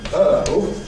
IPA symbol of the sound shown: əʊ